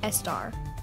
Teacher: it is very common to hear English language learners add an eh sound before the s, making star, for example, estar